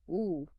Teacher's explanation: Lips are quite rounded, maybe more closed than O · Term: long U